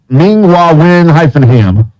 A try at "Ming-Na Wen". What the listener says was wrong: Ming Na Wen. You said Ming Hua. It's a Ming Na.